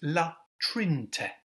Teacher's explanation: we don't pronounce the middle E, so it's La Trinte.